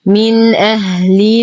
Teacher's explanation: نون ساكنة وبعدها الهمز في كلمتين. الحكم إظهار حقيقي مع غنة ناقصة. نظهر النون ونظهر الهمز